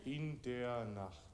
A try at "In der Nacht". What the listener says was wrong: Das war ein sehr schöner Diphthong, bestens. Das war fein.